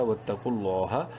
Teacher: اور لفظ اللہ سے پہلے قاف کے اوپر پیش ہے، لام کو بولڈ کریں گے ایک الف کے برابر لمبا بھی کریں گے کھڑی زبر کی وجہ سے. لام کھڑی زبر لا ہا زبر ہا.